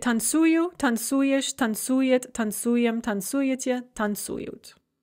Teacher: the stress is going to shift onto the oo when we conjugate it